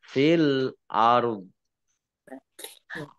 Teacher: Kemudian dzanya dibaca sukun karena waqaf. Maka ada ro sukun, dzo sukun, maka dibaca antara ro dan dzo.